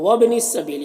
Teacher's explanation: وابن السبیل، یہاں پر حمزہ وصل ہے، ٹھیک ہے، حمزہ وصل ہے تو گر گیا ملا کر پڑھنے کی صورت میں، اور با حروف قلقلہ میں سے ہے تو با میں قلقلہ ہوگا